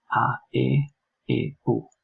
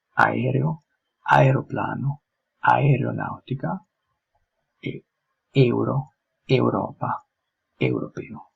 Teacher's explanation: these two vowels together the don't generate an amalgamated sound but each letter has to be pronounced distinctly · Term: double vowels